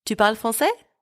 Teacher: You raise your voice at the end of the sentence. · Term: intonation